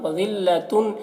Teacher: وذلۃ تنوین میں یہاں پر اخفا ہو رہا ہے، تنوین کی آواز کو ناک میں چھپا کر پڑھیں گے